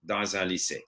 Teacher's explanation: because that consonant is followed by a vowel, the z drags on to the next one